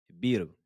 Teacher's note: Ici, comme on marque l'arrêt, on ne prononce pas la fatha. Donc, la lettre ra sera amincie. Elle sera aiguë, prononcée de façon aiguë.